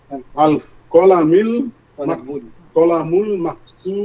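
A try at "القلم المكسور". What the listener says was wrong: কলামুল না, আলিফ লাম আছে, তাহলে কি হবে?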